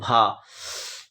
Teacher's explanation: Most important है आपके exam के लिए। हिंदी की स्पर्श घोष महाप्राण ओष्ठ व्यंजन ध्वनि